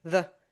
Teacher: the function words are reduced to the schwa sound, and the schwa sound is this completely relaxed neutral sound. It's So your jaw just hangs loose, and you're just gonna say as if someone punches you in the gut, and that's it.